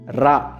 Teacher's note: நாவின் நுனி மேல் அன்னத்தின் முதல் பகுதியை தொட்டு வருவதால் ரகரம் தோன்றும் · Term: இடையின ரகரம்